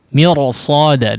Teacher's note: Mirsada di sini huruf ra meskipun didahului oleh huruf yang berharakat kasrah harusnya dibaca tipis, tapi setelahnya huruf isti'la maka dibaca tebal.